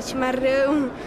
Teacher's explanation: O pessoal de São Paulo, capital, Curitiba e boa parte dos gaúchos faz o R com a ponta da língua.